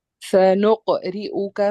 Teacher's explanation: را کے نیچے زیر ہے تو یہ لائٹ پڑھا جائے گا